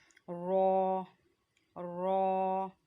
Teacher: रॉ की आवाज़ भी यहाँ से लाम और नून की आवाज़ निकलती है, वहीं से रॉ की आवाज़ निकलती है। हमारी जो ज़ुबान का किनारा है वो दांतों की जो जड़ है उसको ऊपर वाले हिस्से में जाके टच कर रहा है।